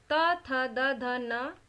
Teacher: ता वर्ग, त, थ, द, ध, न और ल और स, इनका उच्चारण स्थान दांत है। इन वर्णों का उच्चारण करते समय हमारी जीभ दांतों को स्पर्श करती है